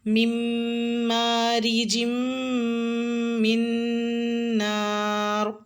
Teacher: نون مشدد پر غنہ کریں